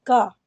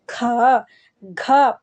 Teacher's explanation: परंतु जो महाप्राण है उसमें ख घ पूरा जोर दे करके बोलना पड़ता है